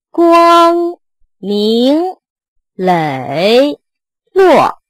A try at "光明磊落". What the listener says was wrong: 不 要 到 最 后 把 它 憋 住 了 ， 明 就 不 走 了 。 明 明 ， 它 是 一 个 敞 开 式 的 最 后 结 尾 ， 不 是 明 憋 住 了 。